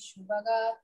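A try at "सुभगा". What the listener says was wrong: It is not Shubhaka. It is Su Saraswati Sa. Subhaka.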